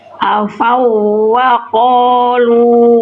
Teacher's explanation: Ini idgham mutamathilan wawunya dileburkan ke wawu berikutnya.